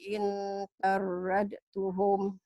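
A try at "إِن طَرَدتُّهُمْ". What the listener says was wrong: In tarattuhum. In tarattuhum. Dan hilang. In tarattuhum. Diidghamkan.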